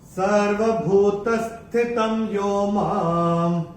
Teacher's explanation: ये जो मां के ऊपर जो अनुस्वार आ रहा है चरण की समाप्ति पे आ रहा है, तो इसका उच्चारण केवल और केवल म ही होगा। और ये दूसरे चरण की समाप्ति पे जो विसर्ग आ रहा है उसका उच्चारण ह ही होगा।